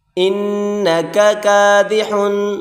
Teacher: چھوٹی کاف باریک کر کے پڑھیں گے